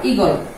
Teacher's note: দীর্ঘ ই যদিও দীর্ঘ, কিন্তু এখানে এর উচ্চারণ হবে খাটো